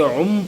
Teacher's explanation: اب سمیع میں عین کے اوپر جو ہے تنوین ہے، 2 پیش، اور تنوین کے فوراً بعد با آ رہا ہے، اور با کے اوپر جو ہے چھوٹا میم بھی ہے، تو ہم سمیع نہیں پڑھ رہے ہیں، عن نہیں پڑھ رہے بلکہ عم پڑھ رہے ہیں، یعنی ہم نے تنوین کو جو ہے میم سے جو ہے تبدیل کر دیا، تو سمیع پڑھ رہے ہیں، تنوین کو ہم نے میم سے تبدیل کر دیا۔ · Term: اقلاب